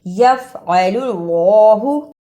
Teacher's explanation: یہاں اللہ سے پہلے پیش آیا ہے، اس لیے اس اللہ کو موٹا یعنی پر پڑھنا ہے